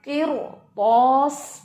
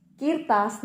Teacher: دو چیزیں، پہلے کسرہ آ گئی ہے، بعد میں مستعلیہ حرف آ گیا. تو مستعلیہ حرف نے اس را کو موٹا ہی رکھنا ہے، کسرہ کا کوئی ایفیکٹ نہیں اس پر ہوگا